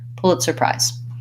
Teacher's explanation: Pulitzer Prize, I'm going to have secondary stress on pull and primary stress on prize. That has the I diphthong and a Z.